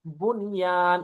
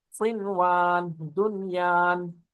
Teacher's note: بنیان، اب لیکن نون کے بعد یرملون میں سے یا آ رہا ہے، لیکن ہم یہاں ادغام بھی نہیں کریں گے، غنہ بھی نہیں کریں گے بلکہ اظہار کریں گے۔ اسی طرح صنوان، یرملون میں سے واو ہے، صنوان، دنیان۔